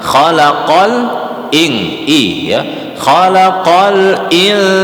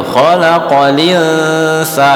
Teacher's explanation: Nah, itu bedanya kita Imam Hafiz khalaqal ing-nya diperjelas huruf hamzahnya.